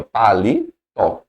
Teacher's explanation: então eu tenho uma oxítona sílaba tônica na última